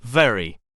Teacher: V, voiced labiodental fricative